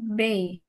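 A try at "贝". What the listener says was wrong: Kan B bacanya P.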